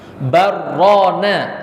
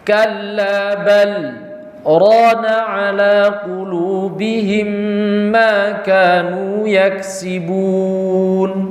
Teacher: di sini harus dipisah antara bal dengan ro · Karena bal dengan ro, kalau itu digabung, kalau diwasol, itu akan menyebabkan idgham dan seakan-akan satu kata. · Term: saktah